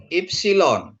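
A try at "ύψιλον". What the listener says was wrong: Bukan upsilon tapi I. Ipsilon. I. Ipsilon ini O. Mulut kita kan bilang O, apa yang keluar I. I itu ya, jadi Ipsilon gitu ya.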